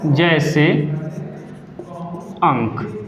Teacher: अनुस्वार उसे बोलते हैं जिसका उच्चारण करते समय वाय नाक द्वारा आए, ठीक है, वहाँ एक बिंदी ऊपर लग जाती है, उसे हम अनुस्वार बोलते हैं।